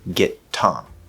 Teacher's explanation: So what you do instead is you're going to hold the first T, do a stop, and then that little extra piece of time lengthens the sound, and then you push out for the second T.